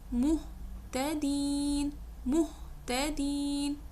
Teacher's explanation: اس میں آپ نے فیل کیا ہا کا ہلکا سا ساؤنڈ بیچ میں آیا